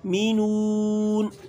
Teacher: اچھی طریقے سے ہونٹوں کو گول کرنا ہے، اور نون آخر میں ساکن آ رہا ہے، وہاں بھی ہلکی سی آواز ناک میں جانی چاہیے